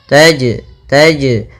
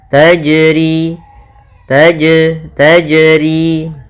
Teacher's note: jim sukun atau jim mati maka ia kita namakan dengan bacaan qalqalah yang mana suara jimnya harus memantul